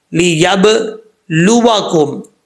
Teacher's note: जब बा साकिन है तो इसमें कल कला होता है